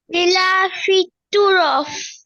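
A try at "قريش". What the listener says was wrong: তু না তো এটা কফ, এটা কফ কুরাইশ।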